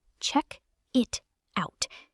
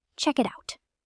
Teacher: A learner might say check it out, but a native speaker blends the K into it and the T becomes a flap T into out.